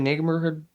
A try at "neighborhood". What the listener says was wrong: The way you said that, I heard the G in that word.